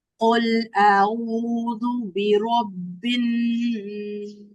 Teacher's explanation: برب الناس غنہ کرنا ہے 2 سیکنڈز تک. یہ کہاں ہوگا؟